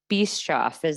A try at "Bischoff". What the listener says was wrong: It's actually Bischoff. The C is silent. But yes, the C is silent.